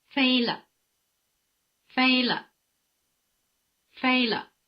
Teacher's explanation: after the rising tone the pitch of the neutral tone is in the middle · after the high tone the pitch of the neutral tone is almost at the bottom